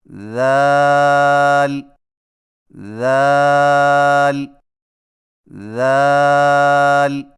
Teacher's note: ذال کی ادائیگی میں زبان کی نوک کو ثنایا علیہ کے اندرونی کناروں سے نرمی سے لگا کر باریک آواز میں پڑھیں